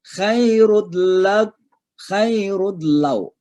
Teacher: Jadi suara n-nya masuk ke lam. Namanya idgham bila gunnah, ya.